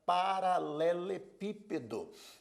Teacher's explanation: a palavra paralelepípedo é uma palavra proparoxítona Por que proparoxítona a sílaba tônica é a antepenúltima